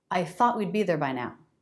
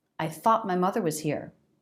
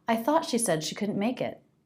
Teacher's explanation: the energy of the voice keeps going forward but for one second it just catches pauses lifts but even with this stop we don't sit on it we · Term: stop t